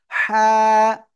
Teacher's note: নাম কি হা এরকম বলবেন হ্যাঁ কেমন বলবো গলাটা চেপে বলবো গলাটা চেপে বলবো হা হালকা বাতাস বের করতে হবে কিন্তু সবাই জোরে বলেন হা ওকে গলা চেপে আমরা উচ্চারণ করব